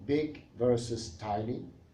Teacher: There are some counterexamples, of course, one of which is striking: big versus tiny. Tiny has a diphthong I that begins with a low open vowel made farther back